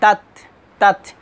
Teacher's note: এ তা এবং কাফের যখন সাকিন আসবে তখন অবশ্যই হালকা বাতাস বের হবে